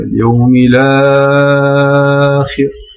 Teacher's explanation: on fait un naql, donc on dit اليوم الآخر avec 4, en fait, vous voyez, 4 harakat